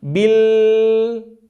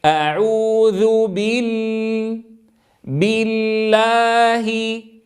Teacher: بعض من يقرا يقول بالل فيفتح الفم عند اللام الاولى الساكنه والاصل ان يبقى الفم عند اللام الاولى في وضع السكون لكننا عند الالف نفتح